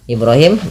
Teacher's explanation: di sini bnya dipantulkan karena ia ada bacaan Qalqalah